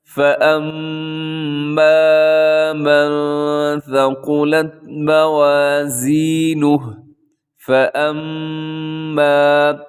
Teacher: آگے دیکھیے گا جی نیکسٹ آیت، فَأَمَّا مَن ثَقُلَتْ مَوَازِينُهُ، فَأَمَّا، یہاں میم مشدد ہے تو یہاں غنہ کریں گے، تھوڑا سا لمبا بھی کریں گے کیونکہ الف مدہ بھی ہے۔